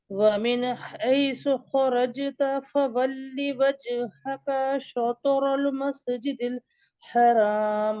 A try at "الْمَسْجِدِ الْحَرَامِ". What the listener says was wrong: حرام. ایک منٹ، میم پہ قلقلہ کیوں کر دیا آپ نے؟ مسجد کے سین پہ بھی قلقلہ کر رہی ہیں.